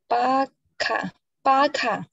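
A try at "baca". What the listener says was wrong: Not baka, I told you. C. Pronounce of C.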